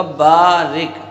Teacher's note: تو با پر زبر ہے اور اس کے بعد الف ہے، تو الف یہاں پر الف مدہ ہے، تو الف مدہ کو ایک الف کے برابر کھینچ کے پڑھیں گے۔ را پر زیر ہے، باریک پڑھی جائے گی۔ کاف ساکن ہے تو کاف جو ہے اپنے پہلے والے حرف سے مل کر پڑھا جائے گا، را سے مل کر۔